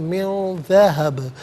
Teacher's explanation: और जब वक्फ़ करेंगे तो मिन ज़हब पढ़ेंगे, बात साकिन होगा और चूँकि हरफ कलकला है तो आवाज़ लौटती भी महसूस होनी चाहिए